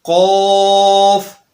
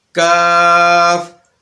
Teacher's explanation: کاف یہ باریک ادا ہوتی ہے، تو نقطوں والی قاف کو قوف موٹا ہی پڑھا جائے گا اور باریک کاف کو باریک کاف ہی رکھا جائے گا۔ ان کی آوازوں کو بھی ادا کرتے ہوئے ایک آواز کو دوسری میں تبدیل نہیں کیا جائے گا۔